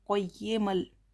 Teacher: यरमलून में से लाम आया है, इसलिए मीम की आवाज़ को लाम से मिलाकर पढ़ेंगे